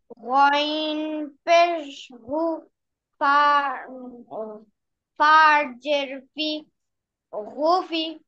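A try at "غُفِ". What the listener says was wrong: হ্যাঁ, এটা সুন্দর হয়েছে, তারপরে একটু বেঁধে বেঁধে গিয়েছে। ঠিক আছে, আরো খেয়াল করতে হবে।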